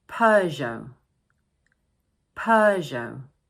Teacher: this word is made up of two syllables and the first one is stressed, and don't forget the silent t at the end of the word